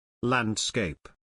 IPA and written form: ˈlænd.skeɪp (Landscape)